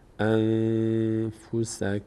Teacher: که نیست که قارده اقلاب صورت بگیره پس قاعده اخفا میشه نون از مخرجش ادا نمیشه از بینی ادا میشه